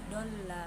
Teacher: karena huruf mat bertemu lam bertasdid dalam satu kalimat, cara bacanya dipanjangkan 6 harokat dan diberatkan serta diidghamkan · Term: mat lazim musaqqal kilmi